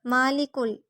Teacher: کاف ڈنڈے والا باریک، کاف کو لام سے ملائیں گے